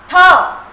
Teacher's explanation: आपने अपनी जबान को या जीभ को दांतों को टच किया, अंदर से हवा जोर से बाहर निकाली और जीभ को वहां से हटा लिया